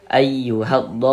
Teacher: Karena cara membaca huruf lamnya dibaca idgham. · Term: idgham syamsiyah